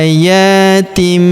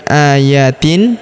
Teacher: Kita baca dengung dan kita tahan dengungnya dua sampai 3 harakat. Tanwinnya tanwin in berubah menjadi mim.